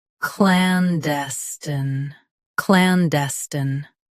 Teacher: Stress clan. Keep d light and end with a soft sten.